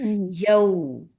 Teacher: ہونٹوں کو ملا رہے ہیں، دھیرے دھیرے ہونٹ مل رہے ہیں، لیکن پورا سکڑ جائے گا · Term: لین سافٹ